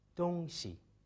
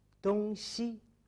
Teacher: When we use the neutral tone on 西, 东 西, that's things or an object.